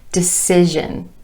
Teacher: our emphasis is still on the syllable right before the word ending.